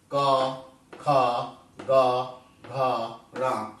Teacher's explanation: पहला वर्ग है क वर्ग, जिसका उच्चारण स्थान कंठ है। कंठ से निकलने वाली ध्वनि, कंठ से निकलने वाले ध्वनि के रूप में निकलने वाले वर्ण क वर्ग के अंतर्गत आते हैं।